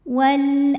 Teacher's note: karena alif lam menghadapi huruf qamariah yaitu Hamzah maka lam ini dibaca dengan jelas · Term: alif lam qamariah